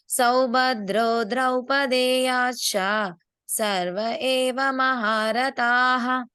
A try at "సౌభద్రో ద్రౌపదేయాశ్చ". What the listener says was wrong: ఛ కొంచెం ఇంకా క్లియర్ గా రావాలి. ఛ ఒకటి అందరూ మళ్ళీ ఒకసారి మనసులో పెట్టుకోండి. ష చ రెండు కలిపి వస్తాయి.